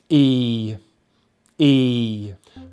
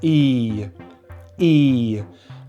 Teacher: And you can't see in the mouth, but the tongue is just forward a little bit in the mouth because this sound comes from the front of the mouth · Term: long vowel sound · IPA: /iː /